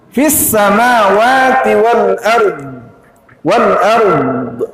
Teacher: Ada suara terseret sedikit pada huruf dad yang berharakat sukun, sementara yang mendahulinya juga harakat sukun.